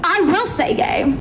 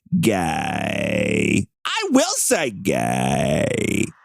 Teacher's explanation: she's got like just a little hint of vocal fry